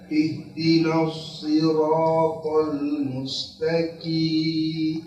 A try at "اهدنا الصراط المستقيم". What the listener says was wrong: Masih ke kaf lagi. Qim. Qi. Q. Mustaqim. pada saat antum mengucapkan huruf qaf sendiri benar, tapi pas dibaca ayatnya jadi ke kaf lagi. Coba yang sama dengan yang antum mengucapkan satu huruf tersendiri itu.